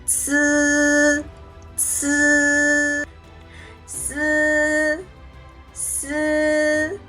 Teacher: tip of the tongue touches against the back of the operative producing s with a weak air flow similar to s in the English word snake